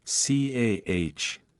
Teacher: The R sound is often silent when it appears at the end of a word, non-rhotic. For example, car is pronounced like CAH.